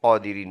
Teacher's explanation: stop کریں گے تو نون کا زبر سائلنٹ قادرین بن جائے گا